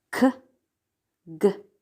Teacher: Velar sounds are produced at the velum or soft palate, such as k, g.